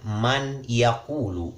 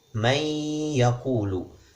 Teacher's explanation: Di kalimat man yaqulu kita membacanya dengan idgham, may yaqulu. Nunnya hilang, masuk ke iya, seolah-olah ada tasydid di sana.